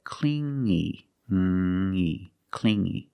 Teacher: You hear the sound only the nasal sound here, no G, not clingy, but clingy, clingy.